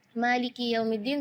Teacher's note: Maka ketika kita membaca Maliki, kita perhatikan kaf kasroh di huruf kaf, harus kasroh yang sempurna